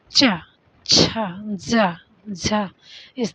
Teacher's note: ये व्यंजन वर्ण जिनके उच्चारण में कुछ घर्षण के साथ वायु बाहर निकलती है। संघर्ष मतलब घर्षण करता है। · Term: संघर्षी व्यंजन